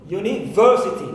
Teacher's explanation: So ver is my stressed syllable in this word.